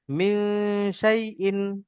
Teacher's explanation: টান দেওয়া যাবে না, এটা লিনের পড়া, লিনে টান হয় না।